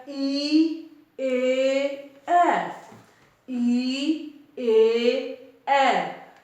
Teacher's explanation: ਜਿਹੜੇ ਸਵਰਾਂ ਦੇ ਵਿੱਚ ਸਾਡੀ ਜੀਭ ਦਾ ਅਗਲਾ ਹਿੱਸਾ ਕੰਮ ਕਰਦਾ ਉਹਨਾਂ ਨੂੰ ਅਗਲੇ ਸਵਰ ਕਿਹਾ ਗਿਆ। ਜਦੋਂ ਅਸੀਂ ਬੋਲਦੇ ਹਾਂ ਈ, ਏ, ਐ, ਈ, ਏ, ਐ, ਤਾਂ ਜਿਹੜੀ ਹਵਾ ਆਉਂਦੀ ਆ ਉਹ ਬਾਹਰ ਤਾਂ ਨਿਕਲ ਰਹੀ ਆ, ਪਰ ਜੀਭ ਦਾ ਮੂਹਰਲਾ ਭਾਗ ਇਹਦੇ ਵਿੱਚ ਕੰਮ ਕਰ ਰਿਹਾ ਹੈ।